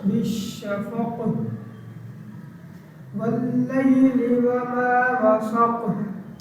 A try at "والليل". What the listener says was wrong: واو تھوڑے سارے نہیں صحیح نہیں. واللیل. واللیل ول نہیں نہ کرنا, یہی تو مسئلہ ہے. واللیل میں نے کہتا ہے واللیل کہتا ہے واللیل دونوں سے فرق ہے.